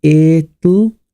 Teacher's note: with British English, you know, we drop the T.